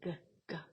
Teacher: subes la lengua contra lo que sería la úvula la campanilla · las eh velares que se producen en la parte de atrás como si fuese el g g subes la lengua contra lo